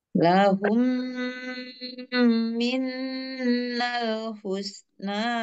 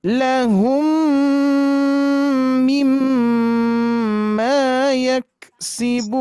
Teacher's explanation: idgham mimi ya, mim bertemu mim. Sama cara gunahnya, cara dengungannya sama dengan guna musyadadah.